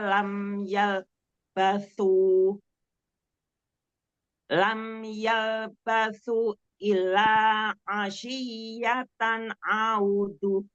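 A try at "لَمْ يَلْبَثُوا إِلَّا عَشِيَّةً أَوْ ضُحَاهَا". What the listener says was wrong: Mad wajibnya, mad jaisnya dipanjangkan lagi 4 atau 5 harokat. Yalbasu illa. Tanwinnya jangan ngerem ya, kasih bainnya, kasih guna setingkat nakisoh.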